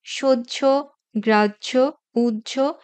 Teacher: নিয়মটাই আছে হ এর সাথে যখন জ ফলা যুক্ত হয় তখন হ এর কোন নিজস্ব উচ্চারণ থাকে না প্রথমে অল্পপ্রাণ হসন্ত জ এবং পরে মহাপ্রাণ ঝ এর ওকারান্ত উচ্চারণ হয়ে থাকে